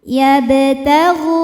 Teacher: Kemudian ada hukum qalqalah sugra karena ada huruf qalqalah yaitu ba yang sukunnya sukun asli dan ada di tengah bacaan kita. Cara bacanya dipantulkan dengan pantulan yang kecil. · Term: qalqalah sugro